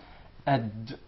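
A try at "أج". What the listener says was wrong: Not ag. There is no gim in Arabic. It is aj. Aj. It seems like it comes from the middle of the mouth. Aj. Aj.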